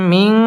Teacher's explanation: নুন সাকিনের বামে সিন আসছে সিন ইকফার হরফ গুন্না লুকিয়ে করতে হবে